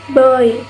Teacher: Oi. This glides from O to E.